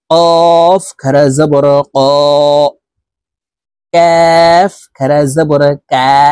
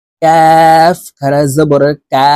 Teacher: কফ হরফ জিহ্বার গোড়া তার বরাবর উপরের তালের সঙ্গে লাগাইয়া উচ্চারণ করব আর কাফ হরফ জিহ্বার গোড়া থেকে একটু আগে বাড়াইয়া উচ্চারণ করব